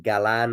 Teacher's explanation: the emphasis, I believe, being on the 2nd syllable